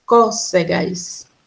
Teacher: a sílaba tônica, é a terceira. Có, ou seja, é a antepenúltima